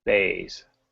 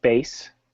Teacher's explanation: So bays has a longer A, base. Very different. It's a shorter A, base, bays.